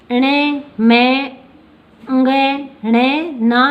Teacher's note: तो प्रत्येक वर्ग का 5वां अक्षर है वो नासिका से बोला जाता है। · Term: पंचम अक्षर